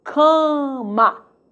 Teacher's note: O M, ele não nasaliza o segundo A, ele nasaliza o primeiro A, cama, ok? E não é dígrafo vocálico, porque o M não está depois do primeiro A, dentro da sílaba do primeiro A. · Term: nasalização